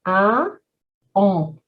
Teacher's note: we need to raise the velum, the soft palate, only to allow some air to pass through the nose and the mouth. It creates some extra resonation in the nasal cavities. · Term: French nasal sounds